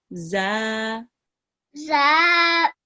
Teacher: This is a za with a vertical fatha. Here, we will prolong it for 2 seconds, just a little bit longer than the normal fatha. So it will be pronounced za.